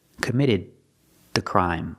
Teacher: The D at the end of committed is before a consonant. So it's a stop D. Stop the air.